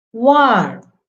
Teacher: Most of the times R remains silent there when it comes at the end of a word